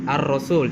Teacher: lamnya tidak terbaca masuk sehingga disebut dengan alif lam asyamsiyah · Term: alif lam syamsiah